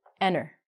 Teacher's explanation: we are not going to say the T if it is with an N and between some vowels. And we're going to actually take out some vowel sounds.